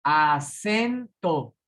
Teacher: La sílaba tónica es sen. Ajá, es en la E, exactamente.